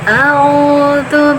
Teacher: Karena ada waw sukun, sebelumnya ada huruf yang berharokat dhammah, dipanjangkan dua harokat mad tabi'i. Nah, untuk makhrajnya ini hamzah sama ain harus dibedakan.